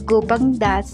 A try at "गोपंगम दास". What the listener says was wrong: गोपंग नहीं गोपंगम दास।